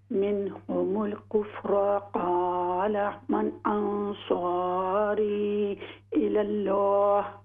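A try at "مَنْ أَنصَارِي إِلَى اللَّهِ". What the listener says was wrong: यहाँ पर इख्फा भी कीजिए नून साकिन में।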